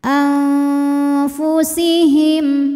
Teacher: harakat ada hukum Ika karena nun sukun menghadapi huruf Fa maka nunnya dibunyikan samar-samar menuju Fa disertai bunyi dengung